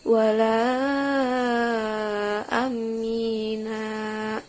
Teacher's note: ada huruf yang ditasdidkan dan dipanjangkan sepanjang 6 harokat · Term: mad farqi